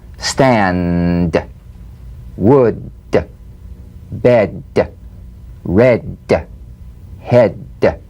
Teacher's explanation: play this D drumbeat on the springing away of the tongue from the upper gum Ridge feel a pulsation in the tongue yeah tap the drumbeat D